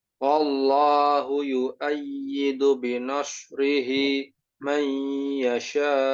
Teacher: nun mati bertemu dengan ya itu idgham bi gunnah